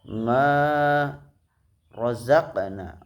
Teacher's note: Ma rozaqna terdapat bacaan qalqalah sugro, sebabnya ada huruf qalqalah berharokat sukun berada di tengah-tengah kata, dibaca memantul dengan suara kecil